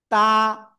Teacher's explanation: জিহ্বার আগা, সামনের উপরে দুই দাঁতের গোড়ায় লাগান, লাগান লাগান, লাগিয়ে উচ্চারণ করতে হবে।